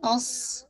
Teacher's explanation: स्वाद को मोटा कीजिएगा